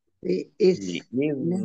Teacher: Liyuto'ah, to biiznillah. Dal sukun bukan kolkolah, jangan dipantulkan.